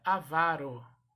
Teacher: A sílaba tônica é a penúltima, então se pronuncia avaro. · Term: palavra paroxítona